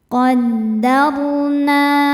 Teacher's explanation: Ro sukun dibaca secara tafkhim karena didahului harakat fathah. Cara bacanya ro dibaca dengan tebal